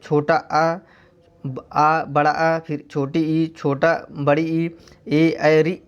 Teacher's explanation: जिन स्वरों के उच्चारण में ओठ गोलाकार नहीं होते उन्हें आवृत्तमुखी स्वर कहते हैं। यानी जिन स्वर को हम बोलते हैं, अगर बोलते वक्त ओठ जो है गोलाकार नहीं होता है तो हम जो है उसे आवृत्तमुखी स्वर कहते हैं।